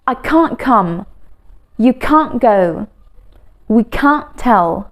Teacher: In American English, it's can't. But if we want to say it faster in British English, we usually do not pronounce that T